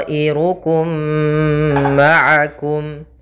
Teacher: masukkan mim yang pertama kepada mim yang kedua. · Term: idgham mimi